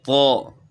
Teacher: زبان کی نوک سامنے والے دو دانت جو ہیں اوپر والے، جن کو ثناء علیہ کہتے ہیں، ان کی جڑ کے ساتھ لگے گی، اور اس کے بعد زبان کو اوپر تالو کی طرف اٹھانا ہے